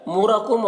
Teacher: را کے اوپر پیش ہے، را کو پور پڑھیں گے